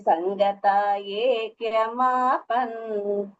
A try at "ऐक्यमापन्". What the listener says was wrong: Not aikya, aikya, ai it is, not a.